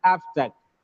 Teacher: abstract is a noun it gets stressed on the first syllable